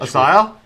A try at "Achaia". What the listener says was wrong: I pronounce a K, as in Christian. I pronounce it with a hard K there, and then Achaia.